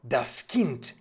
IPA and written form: das kɪnt (das Kind)